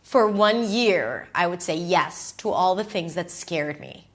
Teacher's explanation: So, a while ago and then she goes a little lower cuz that's serious and that's profound for one year. And the way she stresses is not by going high in pitch, but she just says it a little longer with more intention.